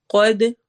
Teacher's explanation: قوف موٹا ہیوی پڑھیں گے اور دال پہ قلقلہ کریں گے